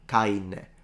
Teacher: a word like carne, depending on where you're from, it can become canne, or it can just become caine, with the addition of an E, with a complete disappearance of the R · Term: drop it in Sicilian